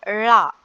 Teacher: நாவின் நுனி மேல்நோக்கி வளைந்து வருடுவதால் தோன்றும் எழுத்து